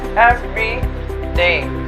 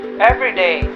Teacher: every day you pronounce both syllables of the words every day everyday on the other hand has only the first syllable emphasized and the second one sort of dives in